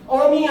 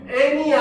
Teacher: 어가 같은 라인의 전설모음인 에로 변하는 거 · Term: 전설모음화